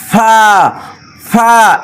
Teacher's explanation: অনেকে এই ফা দুই ঠোঁটের মাঝখান থেকে উচ্চারণ করে ফা ফা এভাবে এটা ভুল কফ কফ কফ কফ কফ কফের